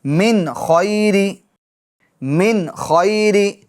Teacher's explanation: نون ساکن کے بعد حروف حلقی میں سے خا آ رہا ہے، تو لہٰذا نون ساکن میں کیا ہوگا؟ اظہار ہوگا، یعنی گناہ نہیں کریں گے.